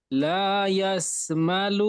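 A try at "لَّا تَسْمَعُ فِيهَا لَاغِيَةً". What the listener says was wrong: লা ইয়াস নই, লা ইয়াস নই, ইয়ার নোক্তা নিচে থাকে, এখানে উপরের নোক্তা এসেছে, দেখে পড়তে হবে। লা তাস,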